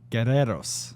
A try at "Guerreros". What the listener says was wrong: Ooh, you didn't really roll it, But you did get the accent. Guerreros.